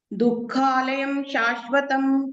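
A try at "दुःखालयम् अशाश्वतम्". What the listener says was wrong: ಅಲ್ಲ ಅಲ್ಲ, ದುಃಖಾಲಯಂ ಅಶಾಶ್ವತಂ ಅಲ್ಲಿ ಮಾ ಹೇಳ್ಬೇಕು, ಇಲ್ಲಾಂದ್ರೆ ದುಃಖಾಲಯಂ ಅಶಾಶ್ವತಂ ಅಂತ ಬರ್ಬೇಕು. ಅಶಾಶ್ವತಂ ಅಶಾಶ್ವತಂ. ಅಲ್ಲಿ ಆ ಕಂಪಲ್ಸರಿ ಬರ್ಲೇಬೇಕಾಯ್ತಾ. ಅದು ಈ ಭೌತಿಕ ಪ್ರಪಂಚ ಅಂತ ಹೇಳುವಂತದ್ದು ದುಃಖಾಲಯ ಮತ್ತೆ ಅಶಾಶ್ವತವಾದದ್ದು ಅಂತ ಅಲ್ಲಿ ಹೇಳ್ತಾ ಇದ್ದಾರೆ.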